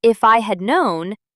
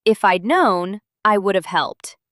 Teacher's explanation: In natural speech, people rarely say the full form. Instead of if I had known, they say if I'd known.